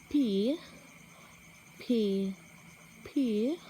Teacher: as the vocal chords are spread apart as air is first passed between them hence they take some time to start vibrating